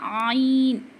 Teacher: आइन पढ़ते वक्त थोड़ा सा हम हलक को दबाएंगे